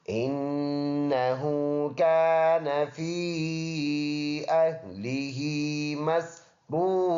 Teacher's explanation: یہ نون مشدد ہے شد والا. یہاں پر پکا غنہ ہوگا، وہ بھی ایک الف کے اندازے سے · ہا الٹا پیش ہو، ایک الف کے اندازے سے اس کو لمبا ادا کریں